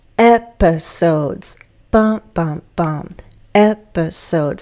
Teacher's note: The first syllable is stressed, and so it lengthens that vowel sound.